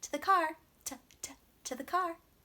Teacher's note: to becomes ta. Very fast and quick and quiet.